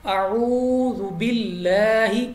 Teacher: اب یہاں پہ لام آف اللہ سے پہلے حرف کے نیچے زیر ہے، تو ہم نے لام کو باریک پڑھنا ہے، باللہ نہ کہ باللہ، ٹھیک ہے؟ لام کو ہم نے باریک آواز ساتھ پڑھنا ہے